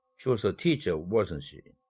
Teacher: 이렇게 부가 의문문에서 말하는 사람의 확신을 나타낼 때에는 falling intonation을 사용하면 됩니다.